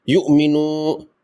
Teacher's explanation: اعوذ، فلیعبدوا، یؤمنو، واو مجزوم سے پہلے نون پر پیش ہے، یہاں اس کو 2 لمبا کریں گے، واو مدہ ہے، اور حمزہ مجزوم جس طرح ہم نے پڑھا تھا اس کو جھٹکے سے پڑھا جاتا ہے